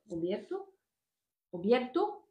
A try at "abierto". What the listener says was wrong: Abierto. Obierto. Parce qu'en catalan, obert.